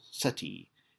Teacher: In this phrase, SETI is pronounced SETI with the accent on the first syllable, SETI. And key is pronounced key as and trust as in English.